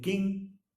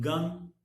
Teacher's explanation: Back of the tongue is the active articulator and soft palate is the passive articulator. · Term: velar sounds